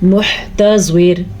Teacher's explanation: را ساکن سے پہلے زیر آ گئی ہے تو را باریک پڑھیں